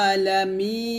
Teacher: আমরা অনেকে এই আইনটা হামজার মত উচ্চারণ করি আলা বলি তো হামজার মত করবেন না একটু চাপ দিয়ে বলবেন